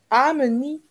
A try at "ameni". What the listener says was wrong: Là, tu n'as pas tiré. Tire un peu, je vois.